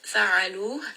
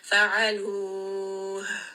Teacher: We are going to give it a little bit of air, and this air is going to come close to the chest because the makhraj of the letter ha is from the lower throat. Fa'aluh. And you are going to hear almost like a sigh because it's coming down from the throat. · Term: hums